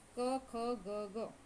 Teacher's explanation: કંઠ્ય કે જે આપણે ગળથી બોલીએ છીએ